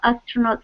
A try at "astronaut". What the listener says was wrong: Yeah, that's right.